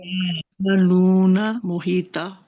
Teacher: ता मोटा भी है और लंबा भी है ता दो अलिफ के बराबर